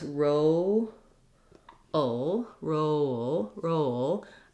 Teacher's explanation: we sometimes have a little bit of a schwa before the L. So if I kind of think of breaking it down as roll, roll, roll, I leave the back of my tongue down and just lift the front for the L. · I leave the back of my tongue down and just lift the front for the L. That gives me that dark L sound.